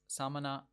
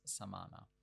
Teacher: What you're hearing there between those two words, Samana and Samana, is just one vowel, the middle A, being lengthened.